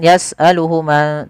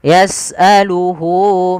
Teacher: panjangnya berapa harakat untuk Mad Silah qasirah yaitu dua harakat maka Hunya di sini panjangkan jangan yas'aluhuma tapi panjangkan dulu di